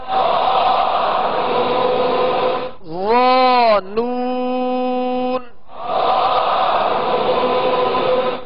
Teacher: ظا کو نرمی کے ساتھ اور پر پڑھنا ہے